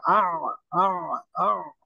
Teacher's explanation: তো আইন উচ্চারণটা আ, আ, গলার মাঝখান থেকে